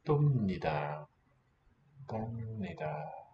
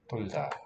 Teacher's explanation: So we lose the L